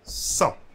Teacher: So we are not pronouncing the T at the end.